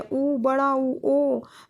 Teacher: जैसे हम उ बोल रहे हैं उ बड़ा उ ओ तो इनमें जो हमारा मुंह है वो गोलाकार आकार का हो जाता है। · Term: वृत्तमुखी